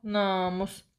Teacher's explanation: Namus sözündə namus sözünün ilk hecəsi uzun tələffüz olunur.